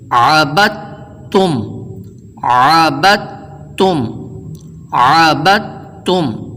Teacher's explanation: اس کی مثال آگے درج ہے، جیسے عبد تم کو عبد تم نہیں پڑھتے بلکہ دال کو سائلنٹ کرتے ہوئے با کو مشدد حرف کے ساتھ جوڑ کر آواز آئے گی